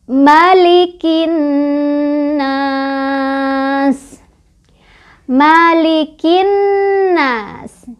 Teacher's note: Jadi gunnah ini sebabnya ada nun yang memiliki tasydid. Cara bacanya kita dengungkan dan dengungannya ditahan 2, 3 atau 4 ketukan